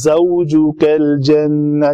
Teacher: وَقُلْنَا يَا آدَمُ اسْكُنْ أَنْتَ وَزَوْجُكَ الْجَنَّةَ، وَزَوْجُكَ الْجَنَّةَ، دیکھ رہے ہیں آپ، زوجُكَ الْجَنَّةَ، جیم کے اوپر پھر پیش ہے، شفتن فوراً گول ہوئے